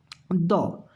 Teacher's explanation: तो इसमें द में स्वर तंत्रियों में कंपन हो रही है। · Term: सघोष